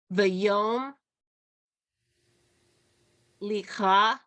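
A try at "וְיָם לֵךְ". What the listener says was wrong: Okay, that's ve yam lich. no vowel under that. It's just the shva, which makes no sound. So it's just yam lich.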